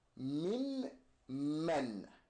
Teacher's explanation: we're going to take this noon and we're going to completely put it in the meme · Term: idgham